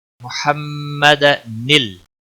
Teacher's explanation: نون کو لام کے ساتھ ملانا ہے، لام کو ہلانا نہیں